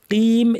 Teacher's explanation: কফটাকে ভারী করতে হবে, কিন্তু বেশি ভারী করে কইম এরকম অনেকে বলতে শোনা, এটা ঠিক না, এত বেশি করতে হবে না, অতিরঞ্জনের দরকার নেই।